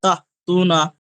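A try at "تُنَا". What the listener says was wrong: তাহ নয়, তাহলে আপনার লাস্টে হা হয়ে যাচ্ছে, ছোট হা হয়ে যাচ্ছে, ওটা হামসা হবে। তা তু না, তা বলেন। হা হয়ে যাচ্ছে আপনার, হা হয়ে যাচ্ছে আপনার, হালকা হা হয়ে যাচ্ছে, ওটা ঠিক এরকম হবে।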